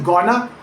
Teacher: going to collapses into something much closer to gonna in casual speech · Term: compression